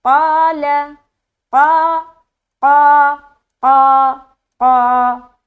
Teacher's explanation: تو یہ حرف قاف جو ہے یہ حروف مستعلیہ کے اندر آتا ہے، لہٰذا جب ہم اس کو ادا کریں گے تو یہ حرف بھی موٹا رہے گا، اور جب ہم اس کو کھینچیں گے، کھینچ کر الف مدہ تک لے جائیں گے تو الف بھی موٹا پڑھا جائے گا